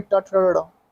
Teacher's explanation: मूर्धन्य ध्वनिया होती है ट ठ ड़ ढ।